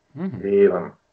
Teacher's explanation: санскритские «е» и «о» для тамильского языка считываются как долгие